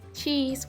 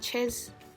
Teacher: The long vowel sound E is said with the mouth much more spread sideways, something like a broad smile.